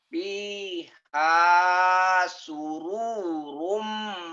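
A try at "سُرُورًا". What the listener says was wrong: Pendek. Nggak ada yang panjang Pak.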